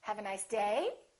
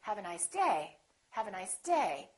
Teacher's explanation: So my voice is still going down even though I'm stressing the word.